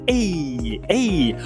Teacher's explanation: O nome técnico dele é vogal, alta anterior, não arredondado. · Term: i longo